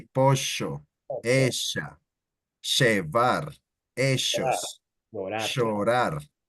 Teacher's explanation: If you talk to an Argentinian, they make the double L sound like a sh